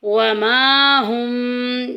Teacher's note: وما میں دیکھیں کہ الف آ گیا، الف سے پہلے زبر آ گئی ہے تو الف مدہ کا قاعدہ جاری ہو رہا ہے، ایک الف کے برابر لمبا کریں گے